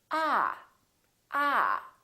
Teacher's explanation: this vowel is usually longer than most people who are non-native speakers tend to make it